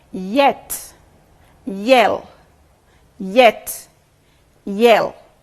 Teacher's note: you'll notice that the front part of the tongue is raised towards the hard pallet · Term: Palo sounds